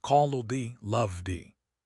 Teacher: This sound is softer than the T. It is a low hum. It doesn't explode. It sustains.